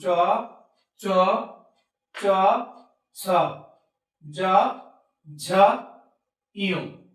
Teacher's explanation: এবং তালব্য ধ্বনি, আমাদের যে তালব্য আছে, আমাদের ভিতরে মুখের ভিতরে যে আমাদের তালু আছে, এই তালুর সাহায্যে আমাদের এই ধ্বনিগুলো উচ্চারিত হয়